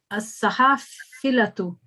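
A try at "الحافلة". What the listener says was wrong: Al-hafilatu. Al-hafilatu. No, it's a lam. Al-hafilatu.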